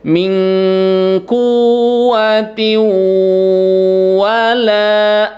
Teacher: Mingkuwatiu, tanwin ketemu dengan waw, itu hukumnya disebut dengan idgham bi gunnah ya. Dileburkan bunyi tanwinnya ke dalam huruf waw ya, kemudian ditahan 3 ketukan.